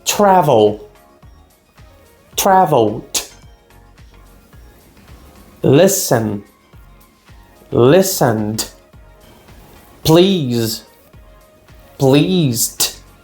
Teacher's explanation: eu vou ignorar o E e vou ler o D. Então, eu vou só colocar um som de T, de D no final do verbo.